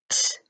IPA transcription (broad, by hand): t